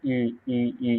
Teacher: ई का उच्चारण स्थान है तालु